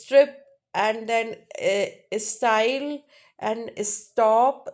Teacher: unaspirated right where there's no h sound